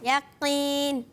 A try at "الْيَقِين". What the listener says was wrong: آخر میں نون ہے، میم نہیں ہے.